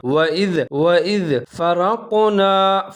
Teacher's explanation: زال کے اوپر ساکن ہے، زال کا آپ نے خیال رکھنا ہے، زا کی طرح نہیں پڑھنا